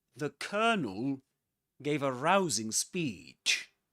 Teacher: in British English before a consonant sound you don't pronounce the letter R.